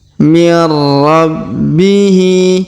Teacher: huruf hi kita panjangkan 2 harokat karena terdapat alif kecil di bawahnya